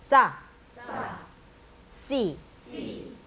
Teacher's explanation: 위에 씨자는 씨라고 이렇게 이빨에 거의 혀가 안 붙으면서 씨 하시면 되고요.